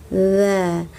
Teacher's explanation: Ujung lidah menyentuh bagian belakang dua gigi depan atas.